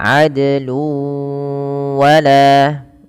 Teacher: Kemudian pada lafal luwa ini sama ketika bertemu sebagaimana syai'an wa, yaitu tanwinnya masuk ke huruf waw karena di sini ada bacaan idgham bi gunnah. Jadi tanwinnya wajib dimasukkan ke huruf waw. Seakan-akan nanti wawnya ada huruf tasydidnya. Maka adlu wala ya, sambil ditahan dua harakat.